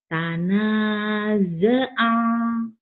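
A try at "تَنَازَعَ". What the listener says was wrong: Kamu kalau zanya kayak orang tanaza'a, jangan tanaza'a, tanaza'a aja. Zaitun, Zainab, Zainuddin. Maka manggil Zainab, Zainuddin, Zain. Jangan di ze, za ya. Pakai a, jangan pakai e.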